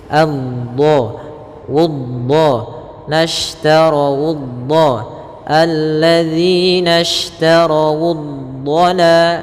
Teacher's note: dhad ada salah satu sifatnya adalah sifat istiqalah, yaitu sifat memanjang sedikit